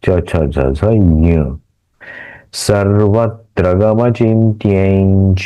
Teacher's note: ये जो अनुस्वार है य के ऊपर का, उसका उच्चारण न्य के जैसा होगा।